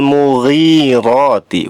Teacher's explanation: mughi dibaca 2 harokat, panjangnya 2 harokat termasuk mad tabi'i. Ada ya sukun.